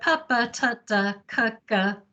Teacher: So they involve blocking the air and then a release. So p involves a release of the lips. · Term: stop sounds